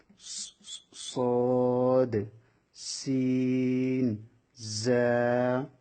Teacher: 12 নম্বর মাখরাজ জিহ্বার আগা সামনের নিচে 2 দাঁতের আগার সঙ্গে লাগিয়ে 3টি অক্ষর উচ্চারিত হবে সদ সিন জা সদ সিন জা। এই 3টা অক্ষর উচ্চারণের সময় এটা শীষ বাইর হবে